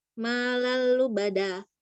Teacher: Hukumnya idgham bila guna lam tanwin ketemu lam bertasdid. Cara bacanya lam pertama dilebur ke lam yang kedua tanpa gunah.